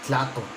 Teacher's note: So in this case, we take Tlatoa, and we drop the A, which gives us a Tlato, and we add a H or a glottal stop. So it kind of gives you that little cut off there at the end.